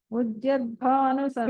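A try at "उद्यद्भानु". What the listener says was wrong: చూడండి, మీరు ఉద్యద్ జా వినిపిస్తుంది, ఉద్యద్భాను సహస్రాభ.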